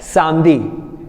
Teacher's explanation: we are not going to pronounce E, so we are going to pronounce it as Samdi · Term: E is silent